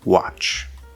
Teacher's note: this t is just spelling it's not wat where there's a t and a ch it's just a ch sound